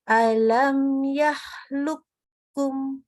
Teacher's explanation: ketemunya qaf dengan kaf itu hilang seluruhnya sifat qafnya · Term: idgham mutaqaribain